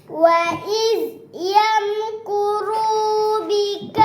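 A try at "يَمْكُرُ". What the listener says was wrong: kuru pendek kuru pendek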